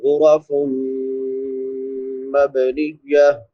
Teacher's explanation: مبنیہ، میم مشدد ہے، شد والی میم پہ غنہ ہوتا ہے، با پہ قلقلہ ہوگا کیونکہ حروف قلقلہ میں سے ہے